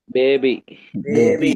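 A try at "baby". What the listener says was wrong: బేబీ అని ఏ యాంగిల్లో నుంచి అన్నావు నువ్వు? ఇందాక నేను బిఏ బివై బిఏ బ్యా అని చెప్పాలి అని అన్నాను కదా. నీకు ఏ యాంగిల్లో నుంచి బే అనే ప్రాబ్లం వచ్చింది ఇక్కడ అంటే పదము బట్టి ఇది బేబీ అని నువ్వే చెప్తున్నావు.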